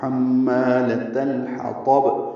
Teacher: حمالۃ الحطب، تا لام باریک ہے، لام ساکن پہ اظہار، اظہار حلقی، ہا وسط حلق سے ادا ہوگا، تو پر پڑھیں گے اور با سے ملائیں گے، با ساکن پہ قلقلہ ہوگا